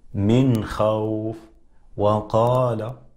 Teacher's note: الواو كما تلاحظون تخرج مع ضم الشفتين، تخرج من الشفتين معا ومع ضمهما، في حين أن الباء والميم يخرجان كذلك من الشفتين مع إطباق ما بين الشفتين.